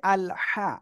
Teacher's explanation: গলাটা চেপে মুখ দিয়ে হালকা বাতাস বের করে আমাদের পড়তে হচ্ছে